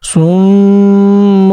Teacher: صم میں صاد کو پر پڑھیں گے، میم پر مشدد ہے تو اس وجہ سے غنہ بھی ہوگا، اور ایک چھوٹی سی میم اوپر بھی لکھی ہوئی ہے. · جب ہم غنہ کریں گے تو اس کے ساتھ ساتھ ایک چھوٹی سی میم اور بھی پڑھیں گے